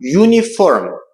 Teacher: Hansı ki, diqqət eləsək görərik ki, bu sözün yazılışında ilk hərf saitdir. Lakin tələffüz zamanı uniform, y səsi ilə söz başlayır. Bu samitdir.